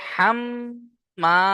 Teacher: মিমের উপরে তাশদিদ ওয়াজিব গুন্না এক আলিফ গুন্না করবেন আর এক আলিফ টানও দিতে হবে